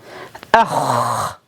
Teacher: With the kha, the air flows and the sound continues.